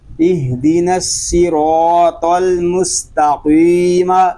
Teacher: قاف یہ زبان کی جڑ اور تالو کے نرم حصے سے ادا ہوتا ہے، اس لیے جب ہم قاف کو ادا کریں گے تو زبان کی جڑ اور تالو کے نرم حصے سے ادا کریں گے، اور اس کی آواز ہے یہ جو حلق کے درمیان گوشت کا چھوٹا سا ٹکڑا لٹک رہا ہے اس سے ٹکرا کر اس کی آواز نکلے گی۔